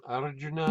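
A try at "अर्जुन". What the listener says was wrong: We don't have I usually, I is anglicized. We call Arjun. Yeah.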